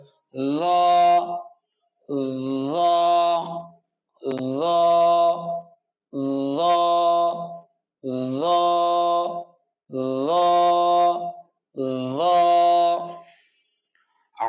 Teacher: জিহ্বার আগা সামনের উপরের দুই দাঁতের গোড়ার সাথে লাগিয়ে আওয়াজকে মোটা করে এক আলিফ টেনে পড়তে হবে ত, ত, ত। ল, জিহ্বার আগা সামনের উপরের দুই দাঁতের আগার সাথে লাগিয়ে আওয়াজকে মোটা করে পড়তে হবে